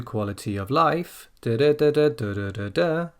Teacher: the down comes on quality of, and then the up comes on life. So when it comes to quality of life, da da da da da da da da, you can hear that there.